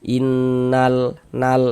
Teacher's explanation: maksudnya dibaca izhar itu huruf lamnya dibaca jelas dia. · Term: izhar qamariah